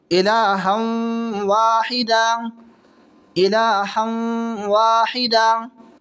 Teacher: दो ज़बर की तनवीन के बाद में वाव आ रहा है, तो यहाँ गुन्ना के साथ मिलाकर पढ़ेंगे। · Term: इदगाम माल गुन्ना